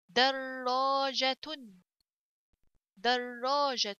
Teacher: So در and the alif here, so this is a letter of mad, so I have to stretch it. در جيم فتحة جا.